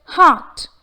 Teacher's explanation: Though the letter R is evident in the word, since it is followed by the consonant T, the R sound is omitted.